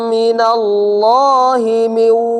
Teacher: Jadi langsung monyong. Kenapa langsung monyong? Iya, karena waw makhrajnya ya kedua bibir. Waw dimonyongkan.